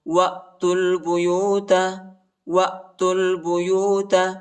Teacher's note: وہ کو حمزہ کے ساتھ ملائیں گے، حمزہ ساکنہ ہے